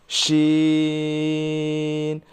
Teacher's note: জিহ্বার মধ্যখান তার বরাবর উপরের তালুর সঙ্গে লাগাইয়া